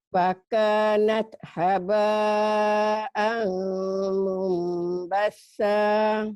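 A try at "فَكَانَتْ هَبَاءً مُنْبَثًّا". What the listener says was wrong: Amnya jangan ragu, bibirnya ditutup. Ini idgham bigunah. Fakanat natnya hamas. Fakanat haba'am mumbassa.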